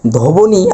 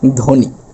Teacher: যেহেতু এখানে ব ফলা রয়েছে ধর সাথে যুক্ত এবং শব্দের শুরুতে তাহলে ব এর কোন উচ্চারণ হবে না। অর্থাৎ ধবনি আমরা বলতে পারবো না।